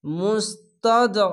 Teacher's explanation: আইনটিকে মোটা করে গলা চিপে পড়বেন, জেরের পাশে ইয়া সাকিন এক আলিফ টেনে পড়বেন।